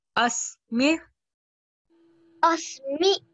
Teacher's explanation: Just remember, do not give a hamza sound. Make sure that you do produce an ain sound.